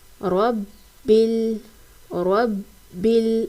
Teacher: با کو جماؤ اور سختی سے بھی پڑھیں گے کیونکہ با کے اوپر تشدید ہے